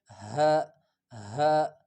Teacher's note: ہا منہ سے ہوا نکالتے ہوئے آسانی کے ساتھ، بس صرف منہ سے ہوا نکلے